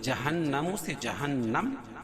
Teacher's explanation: نون مشدد اس میں غنہ ہوگا، اور وقف کی صورت میں میم کے اوپر جو پیش ہے اس کو جزم سے بدل دیں گے، جہنم سے جہنم، اس کو اس طرح پڑھیں گے۔